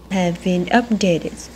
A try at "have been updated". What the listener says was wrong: Bạn có một cái nghe loáng thoáng một cái âm S. Có loáng thoáng với âm S ở cái từ updated đấy.